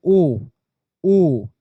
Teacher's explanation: उसमें कंठ की भी ध्वनि आती है और साथ ही साथ में आपका ओष्ठ की भी ध्वनि कहीं ना कहीं पे आपको सुनाई पड़ती है।